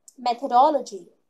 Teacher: the tongue touches my upper teeth and sticks out when I'm speaking